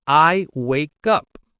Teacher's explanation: The K sound links directly to the U. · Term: linking